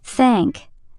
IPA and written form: θæŋk (thank)